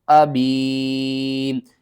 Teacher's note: یا ساکن سے پہلے زیر ہے، 1 الف کے برابر آپ نے کھینچنا ہے